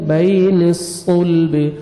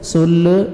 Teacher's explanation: صاد کو موٹا کر کے پڑھیں گے اور لام کے ساتھ ملائیں گے, اور لام کو آپ نے ہلانا نہیں ہے